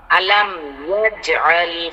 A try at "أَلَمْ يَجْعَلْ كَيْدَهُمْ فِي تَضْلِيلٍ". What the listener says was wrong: না না না না না আলাম ইয়া যে বইলা আপনি দম ফালান আপনার জন্য দম ফালানো দিয়ে দিলাম জান ইয়া যে বলেন ইয়া যে আল হ্যাঁ এখন ঠিক আছে আবার বলেন তো আলাম আহা আমি বললাম যে ইয়া যে বইলা দম ফালাইবেন ব্রেক দিবেন এরপর বাকিটা বলবেন তাহলে ঠিক হবে আবার